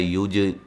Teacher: جیم پہ قلقلہ کریں گے